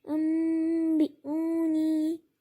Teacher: میں یہاں انبئونی پڑھ رہی ہوں اور غنہ کر رہی ہوں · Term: اقلاب